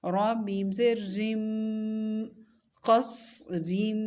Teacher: را اور میم دونوں کو ملائیں گے اور میم مشدد ہے، غنہ کریں گے